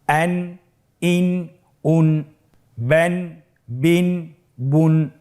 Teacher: প্রত্যেকটি উচ্চারণের শেষে দন্ত ন উচ্চারিত হচ্ছে, আন ইন উন। জি, পরবর্তী হরফ বা 2 জবর বান, বা 2 জের বিন, ব্যান বিন, বা 2 পেশ বুন, ব্যান বিন বুন। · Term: তানবিন